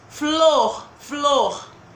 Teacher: sai som dos dois do f do l isso é um encontro consonantal porque eu pronuncio as duas as duas letrinhas